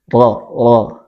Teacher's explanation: Ujung lidah tapi menyentuh langit-langit bagian agak dalam.